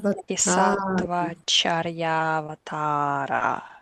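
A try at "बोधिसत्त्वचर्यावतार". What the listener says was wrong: Avatara, two long A's. And the O is long. Bodhisattva Charyavatara.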